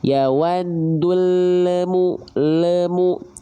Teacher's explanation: Nah, ketika lamnya makhrajnya turun, itu pasti ada bunyi le.